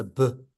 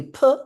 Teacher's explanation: you'll feel it vibrate for the B not for the P